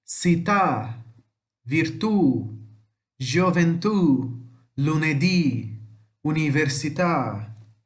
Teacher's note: Sempre a última sílaba mais forte. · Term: oxítonas